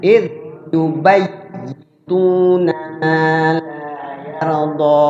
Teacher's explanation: Ingat ya-nya bertasdid tuh. Bacanya dimasukkan, tahan di ya-nya yang pertama.